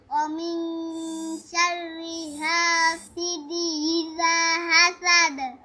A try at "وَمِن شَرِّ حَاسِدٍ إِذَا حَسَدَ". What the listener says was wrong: হাসিদি হবে না হাসিদিন। তাহলে এনের ডাল দুই যে দিন আছে তুমি উচ্চারণ করতেছো না।